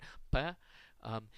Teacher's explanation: It's not aspirated, so it's pronounced like the P in Spanish. You don't have a little puff of air after it.